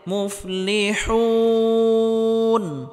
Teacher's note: মাদের হরফের পরের হরফে ওয়াকফ করলে বা থামলে 3 আলিফ পরিমাণ লম্বা করে টেনে পড়তে হবে।